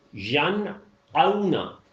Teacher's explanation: آئین کی آواز نہیں ملانی ہے، حمزہ ہی کی رہے گی